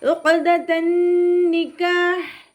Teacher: ഖാഫ് ഇസ്തിഅലാൻ്റെ letter ആയതുകൊണ്ട് ഉയർത്തിയിട്ട് ഉച്ചരിക്കണം. പിന്നെ കൊൽക്കല ലെറ്ററും കൂടിയാണ്, അപ്പോൾ സുക്കൂനിൻ്റെ സൗണ്ടിനെ ഫുള്ളായിട്ട് കേൾപ്പിക്കുക കേട്ടോ. · അയിനിൻ്റെ സൗണ്ട് തൊണ്ടയുടെ മധ്യഭാഗത്തു നിന്ന് തന്നെ കൊണ്ടുവരിക. ഹംസയുടെ സൗണ്ടായി പോവാതെ നോക്കുക.